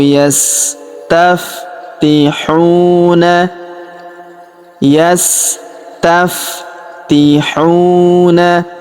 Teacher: Huruf hu kita panjangkan dua harakat karena terdapat wau sukun di depannya